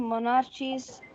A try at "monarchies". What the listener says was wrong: monarchies. It is not a ch, it is k.